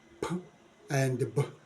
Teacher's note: sounds that are produced by the upper lip and the lower lip these sounds are p and B from bilabial we go to